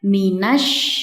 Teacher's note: Perhatikan di sini terdapat huruf shin bertasydid, yang mana huruf shin memiliki sifat tafashi yang artinya menyebar. Jadi ketika kita mengucapkan huruf shin bertasydid, ada aliran udara yang menyebar dalam rongga mulut kita